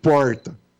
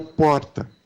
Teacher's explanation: aqui em Barretos a gente tem o r retroflexo que é o porta lá em São Paulo a gente tem o r tep que é o porta